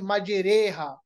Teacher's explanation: जैसे हम पढ़ते हैं मजरेहा, कुरान मजीद में सिर्फ एक जगह है ये मजरीहा के बजाय मजरेहा, तो इसमें आप रा को बारीक पढ़ेंगे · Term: रा बारीक